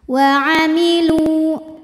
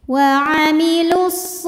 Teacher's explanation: lamnya dua harakat wailu namun dibaca panjangnya hanya saat berhenti saja kalau wasal madnya gugur lamnya dibaca pendek